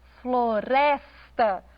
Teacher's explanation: Na palavra floresta, floresta, o res é pronunciado com mais ênfase.